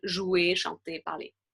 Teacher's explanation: So verbs that end in ER, and I have a whole lesson on that if you're interested, we actually wouldn't pronounce the R, we'd pronounce the E and R together, combined as E